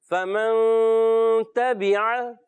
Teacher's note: نون کو کلیئر کر کے نہیں پڑھتے، اخفا میں چھپا کے غنہ کرتے ہیں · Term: اخفا کا غنہ